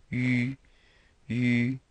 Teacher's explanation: the French U, where your lips are pursed and you move the sound up into your lips